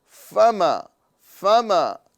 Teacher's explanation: नीचे वाले होठों की तरी और ऊपर के दांतों के सिरे से फ अदा होता है। फ तो यहां पर हम फ अदा करेंगे ना कि फ ये हिंदी वाला वर्ड है और फ ये अरबी वाला वर्ड है। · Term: हर्फ फ